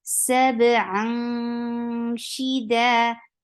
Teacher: Whenever after tanween you find ikhfa letters, you are hiding the sound of noon. You are going towards the makhraj of sheen, and you are keeping the sound in your nose.